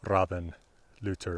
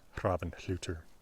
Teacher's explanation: in norwegian they drop the h's before l's and r's